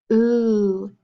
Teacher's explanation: Put your fingers on your neck and feel it. Ooh. Do you feel vibrations? Yeah, because it's a voice. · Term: ooh sound